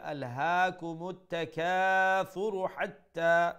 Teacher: make sure you pronounce the ha from the middle of the throat and ta has a shadda double letter double sound